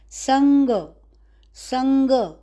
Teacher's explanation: ये ग का अनुनासिक आया है ऊपर ग, संग, क ख ग घ ग, एक ग अनुनासिक ग, ग अनुनासिक ग वर्ग यानी क वर्ग का, क ख ग घ ग, संग।